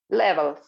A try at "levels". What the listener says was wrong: You see, again, the Z, practice.